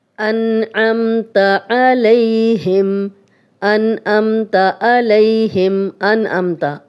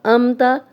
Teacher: تو عین کو حمزہ میں بدل دیا